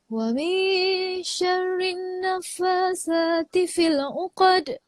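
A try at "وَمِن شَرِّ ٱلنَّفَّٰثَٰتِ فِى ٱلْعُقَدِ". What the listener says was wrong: Okay, perhati pada syarrin tu kena dengar. Wa min syarrin syarrin. Sebab apa? Sebab atas nun tu dia ada sabdu. Dia ada sabdu.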